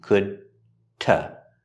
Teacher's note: The D at the end of could is a stop D